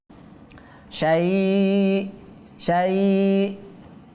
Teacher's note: ওয়া হুয়া আলা কুল্লি শাই, এবং এখানে থামার কারণে হামজাতে সাকিন হয়ে যাবে। তো হামজা সাকিন কি করতে হবে? ধাক্কা দিয়ে পড়তে হবে